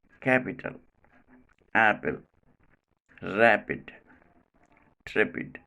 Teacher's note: in the middle or medial position this sound is not aspirated as in words capital apple rapid trippid in the end place